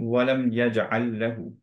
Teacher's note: আমরা মার্জ করে দিই কমপ্লিটলি এই লামটা পরের লামের সাথে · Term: মুতা মাথিলাইন